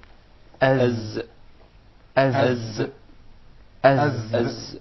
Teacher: the Zay comes from the tip of the tongue and the palates of the two front top incisors at a point just above the two front lower incisors